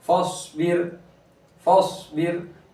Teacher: रा साकिन से पहले बा के नीचे ज़ेर है तो रा को बारिक पढ़ेंगे